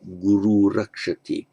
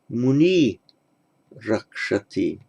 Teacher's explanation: you drop the r and lengthen the preceding vowel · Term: compensatory lengthening